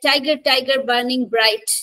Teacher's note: it has one accented syllable followed by one unaccented syllable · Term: trochee